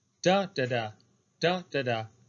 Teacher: So it begins with a stressed syllable, but it ends with an unstressed syllable. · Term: falling meter